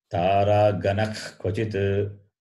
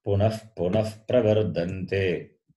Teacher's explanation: One is the throat clearing sound, other one is F sound that visarga takes, depending on what follows. If the following letter is ka or kha, then the throat clearing sound.